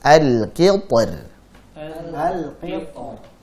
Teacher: Kenapa? Karena ta tebal, kemudian ra-nya tipis.